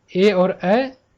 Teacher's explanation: ए और ऐ दोनों का उच्चारण कहाँ होता है, कंठ और तालु से होता है, तालु के सहयोग से होता है।